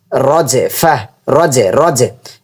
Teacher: এখানে কলক হবে জিমের উপর সাকিন থাকার কারণে